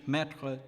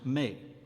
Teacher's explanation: e is open in French metra to put but closed in the plural form of the possessive adjective my pronounced may